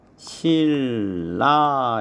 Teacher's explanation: 니은하고 리을하고 만나면 앞에 니은이 유음, 리을로 바뀝니다. 그래서 발음을 하면 실라 이렇게 발음이 되죠.